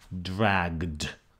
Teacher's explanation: if the final consonant of the root is voiced like like a g then you get the voiced d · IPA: [dragd]